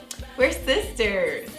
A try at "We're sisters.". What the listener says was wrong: Don't say like sister. We're sisters.